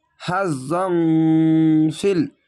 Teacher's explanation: জং ইকফা গুন্না হবে বাংলা অনাস্কার মতো। হাজং ফিল এই লামের সঙ্গে মিলবে।